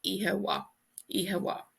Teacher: in Ulster and Connacht, this MH is pronounced like a W